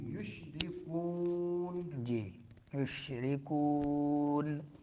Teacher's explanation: یشرکون کون میں جو ہے مدہ ہوگا، لیکن ناک میں آواز نہیں نکالنی